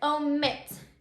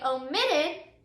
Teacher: So it says the last syllable has to be accented. So when we say omit, we can hear that that last syllable is accented. It's the strongest syllable